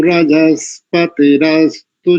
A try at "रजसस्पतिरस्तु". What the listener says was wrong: एक स्थान पर थोड़ा सा चूक गए, रजस्पति नहीं करेंगे, रजसस्पति, रजसस्पति रस्तु, ऐसा करेंगे। पदच्छेद करेंगे तो रजसः पति ही अस्तु, ऐसा हो जाएगा।